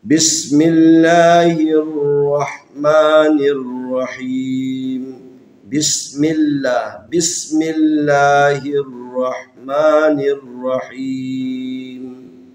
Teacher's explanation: تو لفظ اللہ کو باریک پڑھنا ہے، ترقیق پڑھنا ہے، نارمل طریقے سے پڑھنا ہے۔